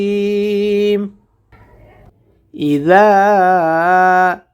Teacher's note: জাল হরফটিকে জিহ্বার আগা থেকে দুই দাঁতের সামনের আগার সঙ্গে লাগাইয়ে উচ্চারণ করতে হয়।